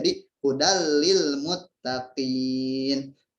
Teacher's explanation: melebur bila guna tanpa dengung. Jadi tanwin ini dileburkan ke huruf setelahnya gitu. Jadi hudal lil muttaqin, yang harusnya hudan lil muttaqin tapi dilebur ataupun dimasukkan ke huruf setelahnya.